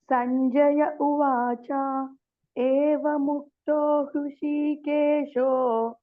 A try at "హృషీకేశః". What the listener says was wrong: కేశో కాదండి, కేశః. రాసుకోండి, కేశః అని రాసుకోండి. ఏవముక్తో హృషీకేశః